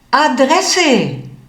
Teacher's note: In einigen Wörtern kann dieses A aber auch anders klingen, wie zum Beispiel bei dem Wort Adresse, wo dieses A jetzt enger klingt.